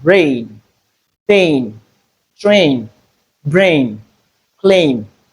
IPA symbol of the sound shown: eɪ